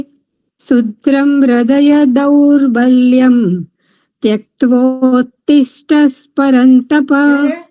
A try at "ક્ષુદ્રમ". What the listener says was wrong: શુદ્રમ નથી, શું છે? ક્ષ છે, ક્ષ.